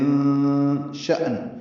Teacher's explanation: حمزہ ساکن ہے، جھٹکے سے پڑھا جائے گا · تنوین کے بعد شین آنے کی وجہ سے اخفا ہے